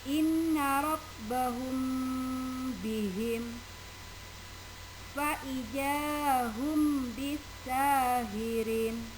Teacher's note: maka mim sukun dibaca samar-samar bibir dan berdengung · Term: ikhfa safawi